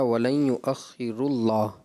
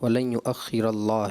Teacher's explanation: را پر جو ہے وہ فتح ہے، زبر ہے، تو آپ نے اس کو دمہ کے ساتھ پڑھا ہے